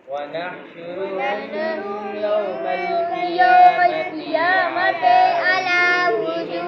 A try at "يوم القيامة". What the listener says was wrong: قیامت نہیں ہے، پنجابی چھوڑو، قیامتی.